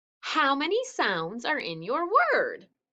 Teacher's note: you'll hear my voice go up at the end when i ask you a question